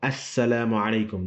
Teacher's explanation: The word assalamu alaikum actually has alif lam, but you don't pronounce it. Why? Because it's lam shamsiya.